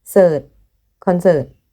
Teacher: In Thai, we don't have the R sound as in English. Just cert. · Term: Thai accent